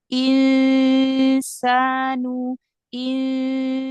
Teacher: Nun sukunnya dibaca samar. Jadi ada nunnya kedengaran sedikit. Kalau tadi nggak kedengaran sama sekali. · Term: ikhfa